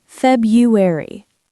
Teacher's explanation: February, the first R is often silent